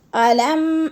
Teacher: علم غنہ نہیں کرنا، ادھر اظہار حلقی ہے